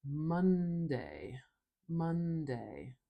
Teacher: So we have a nice nasal sound there. We close the air in our mouth by putting our tongue up behind our teeth and letting the air come out our nose.